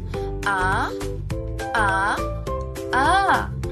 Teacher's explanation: Letrang A, ito ay pasentral, pababa at di pabilog.